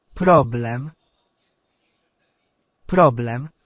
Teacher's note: we need to push down on the penultimate syllable and we need to say the air as in elephant and roll the R